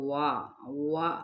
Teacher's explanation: واؤ جون سا ہے وہ دونوں ہونٹوں کو گول کرنے سے یعنی ہونٹوں کی ناتمام گولائی کے ساتھ